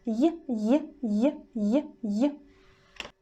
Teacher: The body of the tongue almost touches the palate, but leaves some gap so the air could go